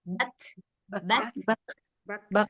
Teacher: Setiap K sukun dia ada anginnya.